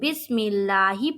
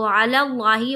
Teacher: جو بسم اللہ پڑھ رہے ہیں وہاں پر باریک پڑھ رہے ہیں، اور جو علی اللہ وہاں پر پر پڑھ رہے ہیں